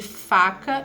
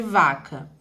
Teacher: temos a labiodental, as labiodentais que são f de faca e v de vaca